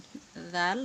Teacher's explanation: জাল সামনের উপরে দুই দাঁতের সঙ্গে লাগিয়ে তারপর উচ্চারণ করতে হবে